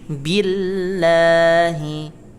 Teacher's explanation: Billahi, lafaz Allahnya dibuat tahqiq atau tipis